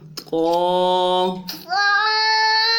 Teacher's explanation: زبان کو وہاں تالو پہ لگائیں گے لیکن موٹا کر کے ادا کریں گے۔ موٹا کرنے کے لیے خصوصی بات سن لیجئے کہ زبان کا جو بیچ ہے، اس بیچ کو ہم کیا کریں گے، اوپر تالو کی طرف اٹھائیں گے۔